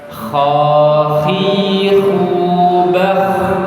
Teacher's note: Kemudian selanjutnya huruf kha ya. Huruf kha ini letaknya juga di tenggorokan bagian atas dekat dengan lidah bagian belakang. Hanya saja getarannya lebih kasar.